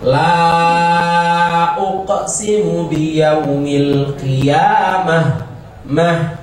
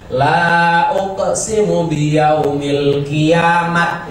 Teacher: Ketika dihentikan maka bunyinya menjadi hak mati